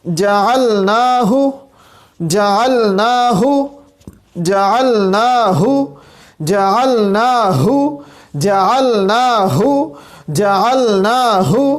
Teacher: اب یہاں پہ بھی ہمارے پاس عین بھی آ رہا ہے اور ہا بھی آ رہا ہے۔ عین ہمارے پاس وسط حلق سے ادا ہوتا ہے، اور ہا ہمارے پاس اقصی حلق سے ادا ہوتا ہے